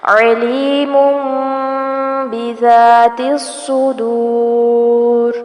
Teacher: علیم یہاں پر اقلاب ہوگا، تنوین کی آواز کو میم میں بدل دیں گے. بذاتی زال کو نرمی سے پڑھا جائے گا.